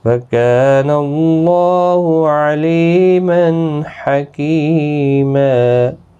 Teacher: علی لی یا مدہ ہے اور تنوین کے بعد حروف حلقی کا ہا اظہار حلقی ہوگا، یہاں تنوین کو ظاہر کر کے پڑھیں گے۔ کی یا مدہ ہے اور وقف بالابدال یہاں پر ہوگا، 2 زبر کو بدل کر ایک زبر کے ساتھ وقف کریں گے۔ · اللہ کا لام زبر کی وجہ سے پر پڑھا جائے گا۔ اس کے اوپر کھڑی زبر بھی ہے، ایک الف کی مقدار کے برابر کھینچیں بھی۔